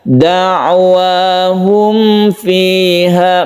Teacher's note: jadi lemas saja humnya, ini langsungkan ke fi tanpa menekan huruf mim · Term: izhar syafawi